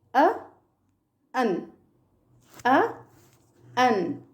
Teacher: మనం మామూలుగా పలికేదేంటి, ఏ, యాన్ అంటాం. కానీ అవి పలకాల్సింది ఎలా అంటే యూజింగ్ శ్వా సౌండ్. అ, అన్, అ, అన్ ఇలా యూజ్ చేయాలి.